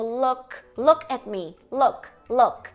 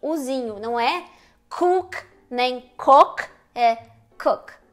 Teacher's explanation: Então pode ver que a tua língua tá um pouquinho mais baixa entre um U e o O. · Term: U curto